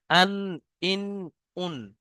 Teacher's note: 9 নম্বর মাখরাজ, জিভের আগা এবং তার বরাবর উপরে তালুর সাথে লাগিয়ে উচ্চারণ হয় নুন। দেখেন উপরে যেটা তালু আছে, খাঁচ কাটা মতো, ওখানে জিভটা লাগছে, দেখেন জিভের আগাটা, নুন।